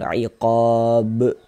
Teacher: Nah, dan ini dia masuk kepada qalqalah besar, qalqalah kubro. Karena kita berwakaf, karena kita berhenti ya tepat di huruf qalqalah. Maka ini adalah qalqalah kubro, qalqalah besar.